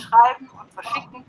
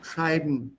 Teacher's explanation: the en at the end merges with the consonant before that